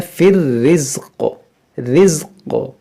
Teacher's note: जब क़ाफ़ साकिन होगा तो इसमें क़लक़ला भी होगा। यहाँ पर देखें ज़ा पहले से साकिन है, क़ाफ़ को भी साकिन करेंगे।